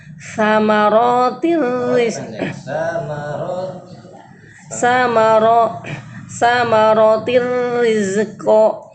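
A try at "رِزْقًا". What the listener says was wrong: Nah, huruf za jangan mantul. Rizqo. Rizqo.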